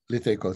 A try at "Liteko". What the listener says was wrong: Okay, the first one is pronounced D. It's written with an L, but it's Diteko.